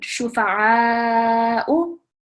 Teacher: Just work on your ayn. So your ayn is coming from the middle of your throat.